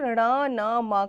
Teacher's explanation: ण न म का उच्चारण जो होता है वो नासिका से होता है। मतलब हमारी नाक से होता है।